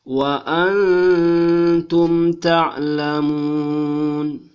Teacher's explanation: nun sukun atau nun mati ketemu dengan ta, maka dia dibaca samar-samar dan berdengung dua alif. Wa antum, tidak boleh dibaca wa antum. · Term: ikhfa